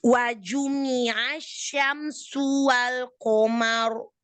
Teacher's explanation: u-nya, domahnya jelaskan lagi ya. Domah. Sempurnakan dengan memonyongkan kedua bibir.